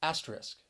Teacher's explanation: the word has three syllables and the stress is on that first syllable that second syllable you hear that schwa and i think this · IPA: ˈæs tə rɪsk